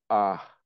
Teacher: it's an H with a little bit of a breath